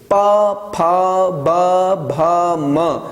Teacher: उ, ऊ, प, फ, ब, भ, म, इनका उच्चारण स्थान है ओष्ठ।